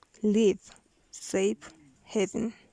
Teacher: Voiced lenis labiodental fricative